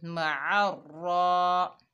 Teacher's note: आइन के ऊपर ज़बर, आगे रॉ मुशद्ददा है, आइन को रॉ से मिलाएंगे, बीच में अलिफ और लाम आ रहे हैं, इस्तेमाल में नहीं हैं क्योंकि इनके ऊपर इराब नहीं है। मार, रॉ के ऊपर खड़ा ज़बर है, एक अलिफ की मिकदार खींच कर पढ़ेंगे और रॉ को मोटा पढ़ेंगे